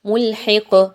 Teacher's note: قاف پر جب آپ جزم لگاتے ہوئے وقف کر رہے ہیں دعا مکمل ہو رہی ہے تو آپ نے اس قاف کو ہلا کے پڑھنا ہے، قلقلہ کرنا ہے